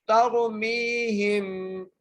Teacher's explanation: تا کو را سے ملانا ہے، را کو موٹا کر کے پڑھنا ہے